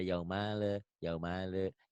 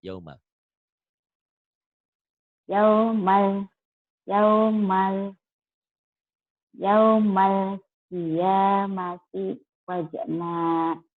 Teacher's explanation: Ini alif lam komariah disebut juga idhar komari. Jadi bunyi L-nya harus jelas.